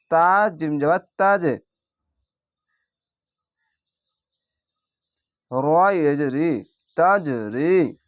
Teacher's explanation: এখানে কলকলা ধাক্কা মেরে নিচে সাউন্ড আসবে